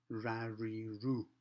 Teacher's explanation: Starting with R, remember what we said, the tongue goes back to the back part of the top of the mouth as far as it can, and it makes the sound R, ra, ri, ru.